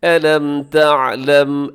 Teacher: میم ساکن کے بعد تا ہے تو میم ساکن کے یہاں اظہار ہو رہا ہے